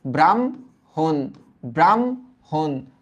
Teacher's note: যখন আমরা উচ্চারণ করব তখন কিন্তু ম আগে আসবে হ পরে যাবে